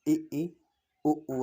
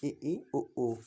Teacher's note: वह स्वर जिनके उच्चारण में मुख बहुत कम खुलता है उसे समृद्ध स्वर कहते हैं। इन्हें अग्र समृद्ध स्वर भी कहा जाता है।